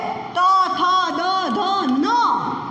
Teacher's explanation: તમારી જીભ છે ને, જીભ એ તમારા દાંતને ટચ કરીને જશે. તો તથ દ ધ ન વાળા કોઈ દી બાળકો બોલી ન શકે, કારણ કે એને હજી દાંત જ નથી આવ્યા. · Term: દંત્ય વર્ણ